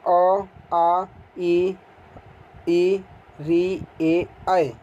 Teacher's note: जिन स्वरों का उच्चारण करते समय ओठ गोल नहीं होता है उसे अवृत्ताकार स्वर कहते हैं। इसमें अ, आ, ई, री, ए, ऐ ये आते हैं।